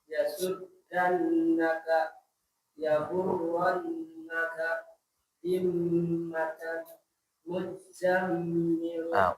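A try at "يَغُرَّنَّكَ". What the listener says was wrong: Ulangi, Z-nya lebih jelas.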